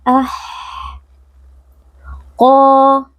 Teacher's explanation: Qof adalah huruf tebal, huruf tafkhim. Jadi, angkat pangkal lidah agar bisa menebal dengan sempurna. Kemudian, dalam qo ini, ada juga mad thabi'i, sehingga harus dibaca dengan dua harakat karena ada alif yang didahului fatha.